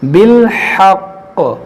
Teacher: یہاں پر ہم رکیں گے تو اس تشدید کو باقی رکھیں گے, اس زیر کو ساکن کریں گے. بالحق اور قلقلہ کریں گے.